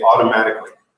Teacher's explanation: If you're hearing a Canadian person or most Americans saying it, they're going to say automatically. In which case, it sounds more like it has D's instead of T's.